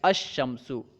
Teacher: الشمس میں لام نہیں پڑھا جا رہا ہے، کیونکہ ادغام کی وجہ سے لام یہاں پہ پڑھنے میں نہیں آ رہا ہے